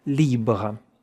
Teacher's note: The R at the end has to make such a little vibration. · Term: French R